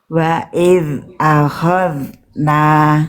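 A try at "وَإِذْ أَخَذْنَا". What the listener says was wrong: Masih bocor ya yang ini nih. Wa, perhatikan bunyinya. Jangan sampai ada nafas lolos. Wa iz akhadna. Jadi yang ini zal, yang ini udah bagus, yang ini masih bocor.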